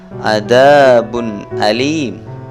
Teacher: Di sini ada tanwin, dhammatain bertemu dengan hamzah, maka dhammatain tanwin di sini harus dibaca jelas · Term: idhar